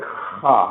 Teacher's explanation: خا ہلکی سی خراش کے ساتھ ادا ہوگا یہ، لیکن اتنا زیادہ بھی نہیں ہوگا کہ خا، ایسا بھی نہیں، خا خا خا خا خا، ہلکی سی خراش اس میں ہونی چاہیے۔